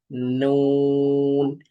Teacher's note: জিহ্বার আগা তার বরাবর উপরে তালের সঙ্গে লাগিয়ে উচ্চারিত হয় নুন নুন আর নুন বলার সময় ঠোটটা গোল হবে।